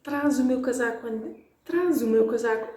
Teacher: an S between vowels, doesn't matter if it's 2 different words, will sound like a Z.